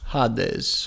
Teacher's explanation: Hades, with a rough breath.